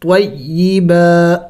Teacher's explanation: با کو کھینچیں گے ایک الف کے مقدار